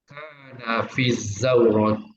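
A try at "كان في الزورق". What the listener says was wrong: Fizauroki, gunakan qaf Haji. Kana fizauroki soyada as-samaki.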